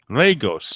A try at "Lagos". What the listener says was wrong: As if it's L-A-Y. Lagos, not Legos. You're saying Legos. It sounds like you